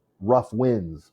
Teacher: sorta gives it a um an umph rough winds both are stressed in this and that's called the spondy